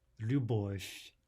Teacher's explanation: There's the devoicing of a soft V to a soft F.